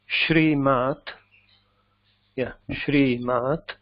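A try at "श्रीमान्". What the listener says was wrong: No, this is na. Shriman.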